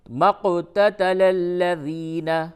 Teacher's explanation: قاف پہ قلقلہ ہے اس وجہ سے کہ اس پہ جزم ہے